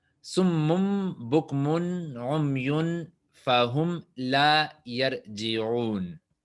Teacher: Hay que hacer un esfuerzo muy estricto o superficial para pronunciarlo. Entonces, más natural, según la fonética árabe, es tener la combinación de la B con la M, porque son de los labios más cercanos. Por eso, summon convierte en summum y luego directamente bokmon, ¿sí?